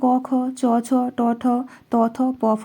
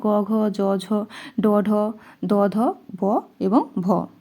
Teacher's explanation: এই অঘোষ বর্ণগুলি যখন আমরা উচ্চারণ করছি তখন আমাদের স্বরতন্ত্রে কিন্তু বেশি কম্পিত হচ্ছে না। সেজন্য এই বর্ণগুলিকে আমরা বলছি অঘোষ বর্ণ।